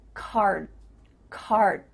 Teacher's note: D sound but your mouth is making that shape card card my tongue is flat against the roof of my mouth to make the D but it's not coming out